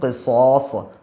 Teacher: قاف کو بھی ادا کریں گے اور یہ صاد ہیں ان کو بھی موٹا ادا کریں گے